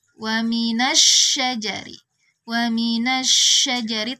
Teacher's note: ada angin yang menyebar di dalam mulut kita karena sifat at-tafasyinya